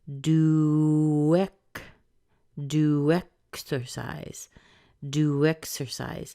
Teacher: you're going to hear a bit of a connection sound between this w and the e